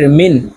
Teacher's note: নুন সাকিনের পরে ইজহারের হরফ আইন আসছে তো এই নুনকে গুন্না ছাড়া স্পষ্ট করিয়া পড়বো